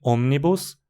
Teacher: Por isso, em omnibus, a pronúncia é proparoxítona, porque a penúltima sílaba, ni, tem apenas uma mora